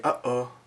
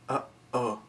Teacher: So you could be in English, if we say uh-oh, you can hear it uh-oh, that thing kind of in between uh-oh. That's your epiglottis is closing over the airways. That's called a glottal stop.